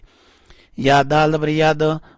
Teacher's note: دال کے اوپر کلکلا کریں گے یعنی دال کو اٹھائیں گے